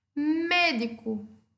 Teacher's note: a minha antepenúltima sílaba é a sílaba tônica por isso eu considero essa palavra esdrúxula